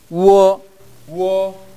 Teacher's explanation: 우와 오가 나오면 우어 하는 식으로 발음이 됩니다